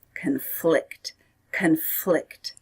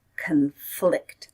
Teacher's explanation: can't do both of them so the noun was conflict and the verb is conflict conflict stress is on the second syllable